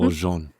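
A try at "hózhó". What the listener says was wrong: Oh, no N at the end. It's Hozhó. Hozhó.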